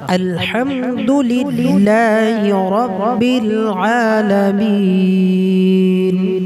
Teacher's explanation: রয়ের সময় মুখটা স্বাভাবিক হবে, অর্থাৎ রাটা মোটা হবে।